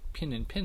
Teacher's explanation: One final example of a merger is the so-called pin-pin merger. This is a merger where the I and E vowels of those two words are usually pronounced the same as an I. This is a conditioned merger.